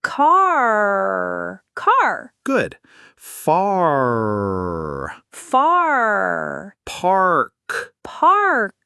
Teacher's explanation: Start with an open a sound like at the doctor's office and then pull your tongue into that r position.